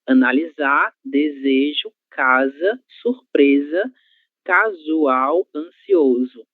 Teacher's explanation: É um som vozeado, certo? E esse som vai acontecer sempre que a letra S estiver sozinha no meio de duas vogais